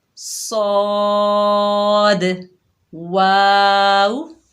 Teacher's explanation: صاد حروف مستعلیہ میں سے ہے، موٹا ادا ہوگا